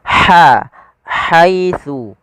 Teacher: Makhrajnya dari tengah tenggorokan kita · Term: huruf ha